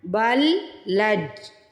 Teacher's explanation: بل لجوا، پہلے بل پڑھنا ہے پھر لج پڑھنا ہے، بل لجوا، جو کو سٹریچ کرنا ہے، پیش کے بعد واو ساکن آ رہی ہے۔